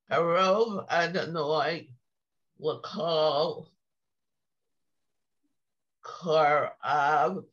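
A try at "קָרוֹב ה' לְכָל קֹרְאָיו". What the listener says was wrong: Good girl.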